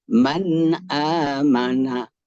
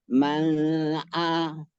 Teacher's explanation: nun sukun atau tanwin bertemu dengan Hamzah harus diperjelas izharnya